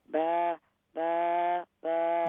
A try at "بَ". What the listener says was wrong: No. The first ba is short. It's got fatha, so it's ba. Ba, ba. No, the first one isn't ba.